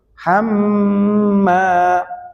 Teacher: Ada mim tasdid ditahan di situ. Hamma, ya ditahan.